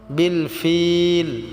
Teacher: ফিলটা আমরা তিন আলিফ টেনে পড়বো